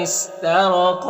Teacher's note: را کے اوپر زبر، را کو پر پڑھیں گے، قاف حروف مستعلیہ میں سے پر پڑھیں گے